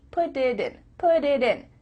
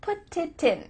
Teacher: Because instead of spending the time to let the air come out of your mouth, your tongue is just tapping the top of your mouth to make a D.